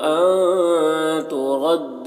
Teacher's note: अन के नून में इख्फा और नून की आवाज़ को नाक में छुपा कर पढ़ेंगे।